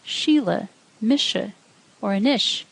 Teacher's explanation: Slender S sounds like sh